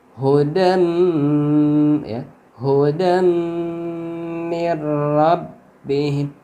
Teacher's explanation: Jadi tanwinnya diidghamkan dalnya, tanwinnya diidghamkan ke mim atau dimasukkan ke mim lalu digunnahkan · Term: idgham bi gunnah